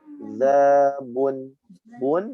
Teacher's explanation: Tidak boleh didengungkan karena bertemu dengan huruf hamzah dibaca izhar.